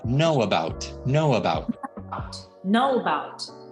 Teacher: anymore can we emphasize that uh just a tiny tiny bit it's a very small sound but i should hear this uh between the o and the bout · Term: the schwa sound